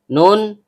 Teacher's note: Diawali dengan hamzah koto atau hamzah berbentuk alif yang keluar dari tenggorokan bagian bawah. Nun, ujung lidah bertemu dengan langit-langit bagian tengah.